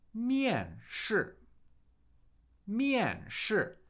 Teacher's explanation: That's 2 fourth tones, right? 2 falling tones.